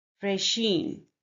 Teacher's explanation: Here the stress is on the second syllable.